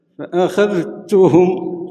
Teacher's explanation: لا ورش يدغم فأخذتهم. ذال مع التاء إدغام، تاء راهي مشددة